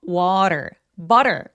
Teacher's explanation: 그래서 모음 사이에 끼어 있는 t나 d들은 굴려서 발음을 하는데 굴려서 발음하는 거 기억나세요? water. butter 같이 t나 d들이 굴러가는 소리 내는 거 마치 우리말의 리을처럼요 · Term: flap t 사운드